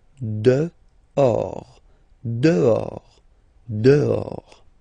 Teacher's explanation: this H in French doesn't exist phonetically, so you don't pronounce it